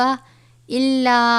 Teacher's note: چھوٹی مد ہے 3 الف کے برابر